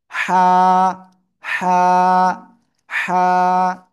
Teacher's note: just এই যে গলা গলার মধ্যখান হালকা চেপে ধরে উচ্চারণ করতে হবে কিভাবে চেলে চেপে এই হাত দিয়ে আপনি হাত দিয়েও করতে পারেন অথবা হাত ছাড়াও জাস্ট আপনি পড়লে হয়ে যাবে গলার ভিতরে হালকা চেপে মুখ দিয়ে হালকা বাতাস বের করে আপনাকে উচ্চারণ করতে হবে